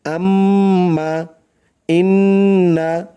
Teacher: নাকের বাঁশি হইতে গুন্নাহ পড়া হয়